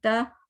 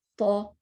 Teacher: تا زبر تا, تو زبر تا, اور اس میں آپ زبان پہ فوکس کریں. تا تو, زبان آپ کی سیدھی ہے تا میں اور تو میں راؤنڈ, ٹھیک ہے, راؤنڈ.